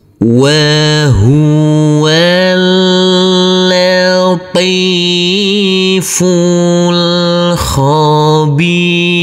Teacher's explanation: Huruf wawu langsung masuk ke huruf lam. Huruf alifnya kita anggap tidak ada, jadi huruf wawu kita baca pendek. Huruf lam cukup kita tekan dan kita tahan saja dengan 2 harokat.